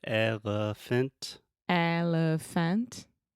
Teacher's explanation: so the elephant, the middle sound, that's the schwa.